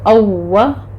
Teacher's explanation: اووا ہونٹوں کو گول کریں، پھر واو اپنے مخرج سے ادا ہوگا، اس پر تشدید کرنی ہے